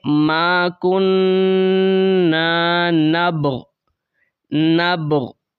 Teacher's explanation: با کے اوپر آپ نے قلقلہ کرنا ہے، پھر آپ نے غین کو پڑھنا ہے · اس کے اوپر وقف کریں گے تو آپ نے غین کو ہلکا سا ظاہر کرنا ہے